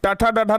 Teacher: ट ठ ड ढ न का उच्चारण स्थान मूर्धा होता है